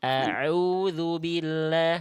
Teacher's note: Dari tengah tenggorokan. Ngeden lagi sedikit. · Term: Ainnya